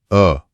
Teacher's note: अ केंद्रीय स्वर है। इसमें जीभ का मध्य भाग काम करता है। वह भी बहुत आराम की स्थिति में।